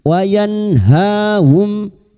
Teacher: Mim sukun bertemu ain idhar syafawi. Mim sukun dibaca jelas tanpa mendengung.